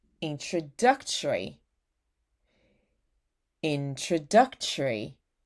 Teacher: There's no O, you know, just relax your mouth. Just say tree.